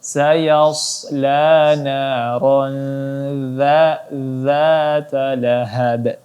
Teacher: huruf za cara membacanya cukup diletakkan saja lidahnya di antara gigi atas dan gigi bawah.